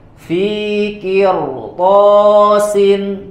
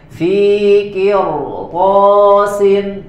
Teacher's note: ro-nya dibaca tebal ya walaupun sebelumnya kasroh